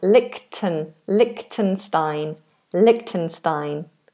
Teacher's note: There isn't a ch in the middle as in a ch sound.